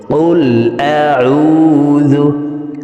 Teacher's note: কফকে জিহ্বার গোড়া তার বরাবর উপরে তালের সঙ্গে লাগিয়ে উচ্চারণ করব।